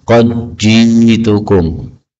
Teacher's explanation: dal ketemu jim, ini boleh idgham,